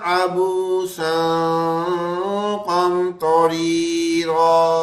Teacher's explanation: نون کی آواز بالکل نہیں آئے گی، صرف غنے کی آواز آئے گی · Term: اخفا